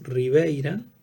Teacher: Yod va a influir sobre A, la va a cerrar en E, la sorda en posición intervocálica se sonoriza